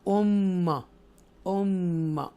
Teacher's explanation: extra stress के साथ मीम को हम अदा करेंगे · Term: इदगाम शफवी